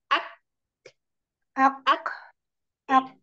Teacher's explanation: karena dia punya udara mengalir, maka ketika kita sudah sampai di makhraj kaf, lepaskan, maka otomatis akan keluar udaranya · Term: huruf kaf